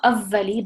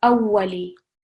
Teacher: with the waw, it's sort of a soft W sound rather than a V sound. So not avvali, but awwali.